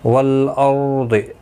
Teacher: والارض، لام ساکن کو ہلانا نہیں، رو ساکن سے پہلے زبر ہے، پر پڑھا جائے گا. ضاد مستعلیہ ہے، پر پڑھا جائے گا